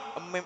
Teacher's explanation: Mim itu kedua bibir menyentuh